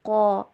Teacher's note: قاف اور الف ان دونوں کو پر کر کے پڑھا جائے گا، قا، اور لام کے آگے جو واو اور دو الف نظر آ رہی ہیں ان کے اوپر کوئی سائن آپ کو نظر نہیں آ رہا ہوگا، تو یہاں پہ کوئی بھی ساؤنڈ ان کی پروڈیوس نہیں ہوگی۔